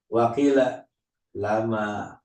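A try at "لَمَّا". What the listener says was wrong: Lama pakai tasdid.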